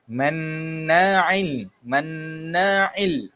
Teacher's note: huruf nun yang ada sabdu hukumnya ialah wajibul ghunnah, wajib dengung.